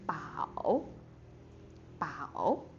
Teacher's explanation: starting from like the second lowest pitch and go down and then it go up again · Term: third tone